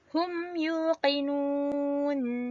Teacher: hukum izhar syafawi berlaku apabila mim mati bertemu dengan Ya bacaannya tidak perlu didengungkan